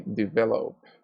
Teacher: The last sound of the verb develop is a P sound, and the P sound is voiceless